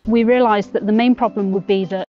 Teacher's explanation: Then the second, slightly weaker stress of the sentence is on realised. · So the content words are realised, main and problem. The main stress of this sentence is actually the word main. So I'll draw a slightly bigger circle on that one. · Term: onset, tonic syllable